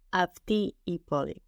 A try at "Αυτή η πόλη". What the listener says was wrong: Αυτή η πόλη. Good.